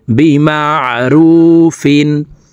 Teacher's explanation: তানউইনের পরে ইজহারের হরফ হামজা আসছে, এই কারণে এই তানউইনওয়ালা ফাকে গুন্না ছাড়া স্পষ্ট করিয়া পড়ব